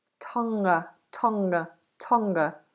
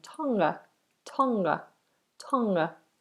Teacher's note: So we make it into a nasal at the back, and then the release comes ever so slightly as we go into the schwa ending.